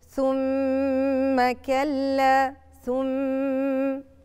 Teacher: ميم ساكنة وميم متحركة، يتضموا الاتنين مع بعض يبقوا مشددتين، يبقى الحكم بتاع الميم المشددة زي حكم النون المشددة الغنة